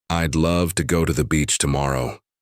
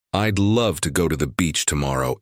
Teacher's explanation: The strong beats are on love, go, beach tomorrow.